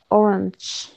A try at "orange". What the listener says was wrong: Again, orange. It's not a, it's e.